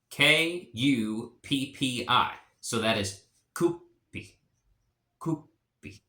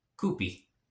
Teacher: if you have like two like P's together, like a P and a P, there almost seems to be like a little pause in between those two P's, much like it would be in Norwegian.